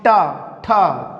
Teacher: जो टा वर्ग है, टा वर्ग को जब हम उच्चारित करते हैं तो उच्चारित करने पर क्या होता है कि जब हम टा, ठा, तो जो जिह्वा होती है वो तालु के पीछे अर्थात मूर्धा में जाती है और मूर्धा से पलट के आती है। इसीलिए कहाँ से उच्चारित होते हैं, मूर्धन्य के द्वारा उच्चारित होते हैं। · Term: मूर्धन्य व्यंजन